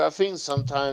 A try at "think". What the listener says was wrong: as he says, think with an F and not TH.